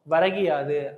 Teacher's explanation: எழுத்து திருப்பு ஏற்படுகின்ற பொழுது அதோட ஒரு மாத்திரை அளவுல ஒலிக்காம அரை மாத்திரை அளவுல ஒலிக்குது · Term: குற்றிய லிகரம்